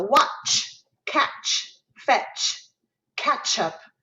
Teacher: and that symbolizes ch in child so watch catch fetch ketchup that ch sound is that t plus the s · That ch sound is that T plus the esh.